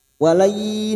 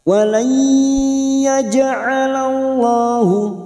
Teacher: nun sukun bertemu ya idgham biguna siap masuk dan mendengung masuk pada huruf ya dan mendengung selama 3 atau 2 harokat.